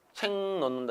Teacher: 니은 때문에 기억이 이응으로 바뀌었습니다. 이것도 비음화 현상입니다.